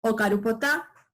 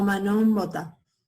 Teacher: Podemos ver que el fonema P en los contextos nasales cambia a B, ¿sí? Entonces tenemos la forma ocarupotá, está a punto de comer, pero con el verbo manó, la forma potá cambia a mbota o manón botá.